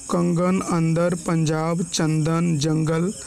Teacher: इनके उच्चारण में नासिका की सहायता लेनी पड़ती है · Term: अनुस्वार